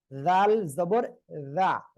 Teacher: জিহ্বার আগা, দুই দাঁতের আগায় লাগতেছে।